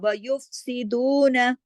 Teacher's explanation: دو کو 2 حرکات کھینچیں گے، اس کے ساتھ واو مدہ ہے